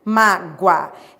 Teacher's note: é um ditongo crescente e oral. Por quê? Porque ele é pronunciado pela boca